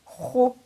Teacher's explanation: Kha with dhamma, again with a full mouth, is pronounced as khu. Kha with the long vowel of dhamma will be pronounced as khu.